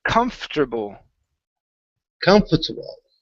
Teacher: when we pronounce this word okay the o r that's in the middle disappears